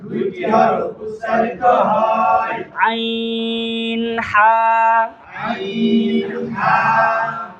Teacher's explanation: হলকের মধ্যখান হইতে 2টি হরফ উচ্চারিত হয়। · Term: 2 নম্বর মাখরাজ